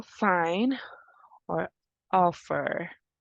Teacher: We have the sound, which is voiceless. It's a voiceless labiodental fricative.